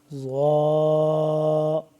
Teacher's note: اوپر والے دونوں دانتوں کے پیچھے لگا کے زبان کو ٹچ کریں گے تو صحیح طریقے سے ظا ادا ہوگا